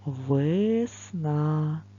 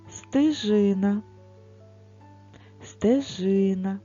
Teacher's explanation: звук е ми говоримо Трошки тихіше інколи може почутися звук и стежина стежина звук е не під наголосом тож ми його проговорюємо